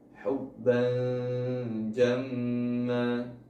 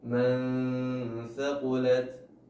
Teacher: Maka ketika nun sukun atau tanwin bertemu dengan huruf sisanya yang berjumlah 15, maka nun tersebut atau tanwin tersebut dibaca samar, antara jelas dan tidak terbaca, dengan bersiap-siap ke huruf setelahnya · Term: ikhfa